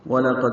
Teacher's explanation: قاف پور دال ساکن پہ قلقلہ دال باریک پڑھا جائے گا۔ وَلَقَدْ علمتم عین وسط حلق سے ادا کریں گے، میم ساکن پہ اظہار شفوی ہے۔